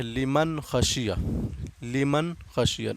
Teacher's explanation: نون ساکن ہے یہاں پہ، اس کو بھی جلدی پڑھیں گے کیونکہ یہ خا آ رہا ہے حروف اظہار سے، حروف حلقی سے